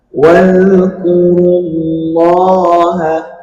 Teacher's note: Mad thabi'i. Dibaca dua harakat.